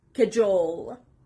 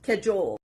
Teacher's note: The stress is on the second part, cajole.